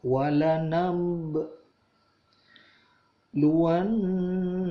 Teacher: ada nun bertasydid, itu dibaca gunnah, dengung, udara ditahan keluar melalui hidung, ditahan kurang lebih 2-3 ketuk